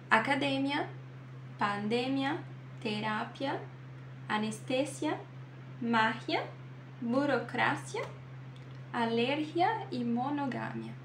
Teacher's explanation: Todas as que são terminadas em IA e não são acentuadas vão ter a sílaba tônica antes do IA